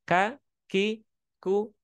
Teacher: Ka itu ada udara percikan udara yang keluar